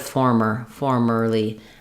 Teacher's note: for the word formerly, we stress on the for syllable, and it has the true or diphthong. And then the challenge here is to make sure that when you're saying former or formerly, that this second sound does still have the tight back American R, former.